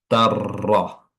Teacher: Jadi, tanwinnya tan dimasukkan langsung ke huruf ro ya. Makanya tanwinnya tidak terbaca lagi, langsung bersambung ke huruf ra sehingga huruf rnya ini bertasydid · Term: idgham bila ghunah